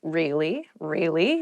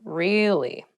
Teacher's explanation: to show that you're not so interested in the conversation with downward intonation.